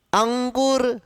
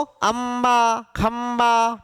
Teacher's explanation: ठीक है, तो अंबा खंबा म का उच्चारण, यहां अंकुर न का उच्चारण, अंगूर न का उच्चारण। अंकुर अंगूर में न है, जबकि अंबा खंबा में म है। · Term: अनुस्वर